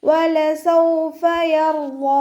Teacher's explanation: കൽക്കലയുടെ letter അല്ലല്ലോ, അപ്പോൾ half സുക്കൂന് കൊടുക്കുക. വാദ് ഇസ്തിഅലാൻ്റെ ലെറ്ററാണ്. നല്ലോണം തഫ്ഹീം ചെയ്തിട്ട് ഉച്ചരിച്ചിട്ട് 2 കൗണ്ട് നീട്ടി നിർത്തി കൊടുക്കുക